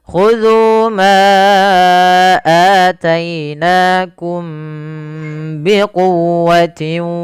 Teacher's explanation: Suara mimnya ditahan karena dia bertemu dengan ba. Yang mana mim itu kan makhrajnya daripada bibir kita. Ba dari bibir kita. Maka ada dua huruf yang berdekatan makhraj ini. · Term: ikhfa syafawi